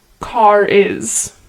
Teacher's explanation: the r sound is inserted